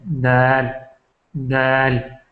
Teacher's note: اس کے بعد جو ہے دال دال، دال میں بھی ہماری جو زبان کی نوک ہے سرا، یہ آگے کے جو فرنٹ کے دو دانت ہیں اس سے ٹکراتے ہیں. دال دال.